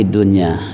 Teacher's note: Izhar, karena nun mati bertemu ya dalam satu suku kata yang enggak bisa dipisah